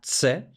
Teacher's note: Entonces tenemos la africada dentoalveolar sorda, la ts.